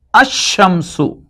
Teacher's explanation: Instead, they exhibit or they show their pronunciation twice. That means the first letter after the alif lam gets tashdeed and it is pronounced twice